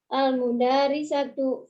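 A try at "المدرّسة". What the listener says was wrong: Coba dilihat apakah ketika Ibu menulis kata yang pertama dalnya panjang? Bukan al-mudarisatu tapi al-mudarrisat.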